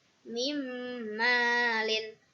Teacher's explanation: Alasannya karena nun sukun bertemu dengan nun. Cara membacanya masuk dengan 3 harokat. Masuk dengan mendengung 3 harokat. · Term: idgham bigunah